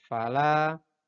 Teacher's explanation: Nah, ini disebut dengan izhar syafawi. Membacanya jelas, jadi bukan samar atau bahkan bukan dengung.